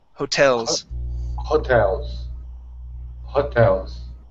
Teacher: The stress is at the end of the word.